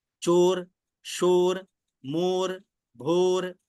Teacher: ओ में होठ गोल हो जाते · चोर, शोर, मोर, भोर, है ना, गोल हो रहे हैं होठ।